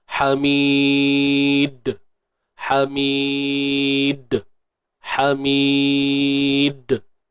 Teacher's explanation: hujung sekali terdapatnya qalqalah kubra, lantunan besar lah. Sebab kita waqaf pada qalqalah, huruf qalqalah di hujung bacaan. Hamid. Yang penting jangan pantang larang qalqalah ni bukan bunyi dimatikan dengan bunyi hamzah belakang lah.